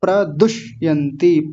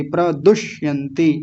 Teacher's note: ठोकर लगती है इस मूर्धन्य शकार पर जैसे ट ठ ड ढ में लगती है तो वैसे ही यहां भी जीभ ऊपर जाएगी मूर्धा में ठोकर लगेगी